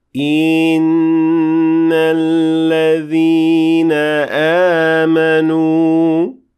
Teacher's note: I extended the kasra under the hamza, resulting into a ya that is added needlessly to the beginning of the word.